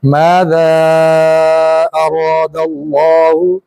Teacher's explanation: ذال کو بھی ادا کرتے ہوئے زبان کی نوک دانتوں کی نوک سے لگائیں گے جہاں سے سا ادا ہوئی تھی، یہ مسالہ کی سا ادا ہوئی تھی نا، وہیں سے ذال ادا ہوگی، یہ اس کا ہم مخرج ہے، اس کو حروف لثویہ کہتے ہیں، کہ زبان نرمی سے لگتی ہے اور نرم آواز نکلتی ہے۔